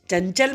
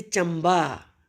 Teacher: इसको चन भी होता है, चम भी होता है, जैसे चंबा। चंचल में ना की आवाज़ है, लेकिन चंबा में माँ की साउंड है।